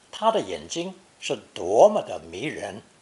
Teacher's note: 多 with the particle 么 is an emphatic expression and is often pronounced second tone for that reason.